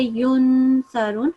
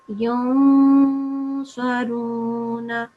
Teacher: You have prolonged it for 2 seconds, but make a nasal sound, not the full noon sound.